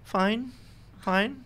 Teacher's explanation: like with a rising intonation, that means she's fine